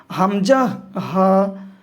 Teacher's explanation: হলকের শুরু হইতে উচ্চারিত হয় হামজা হা।